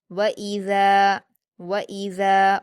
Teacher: واؤ پر حرکت جلدی پڑھیں گے، حمزہ پر حرکت جلدی پڑھیں گے، ذال پر الف مدہ ہے اسے 2 حرکات کھینچ کر پڑھیں گے اور نرم پڑھیں گے